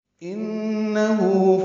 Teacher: ہو الٹا پیش مد صلہ ہے، دو حرکات لمبا کرنا ہے